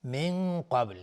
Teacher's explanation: نون ساکن بهش قاف اخفای حقیقی و قاف از حروف استعلاس غلیظ تلفظ میشه و با هم قلقله میخواد اینجا.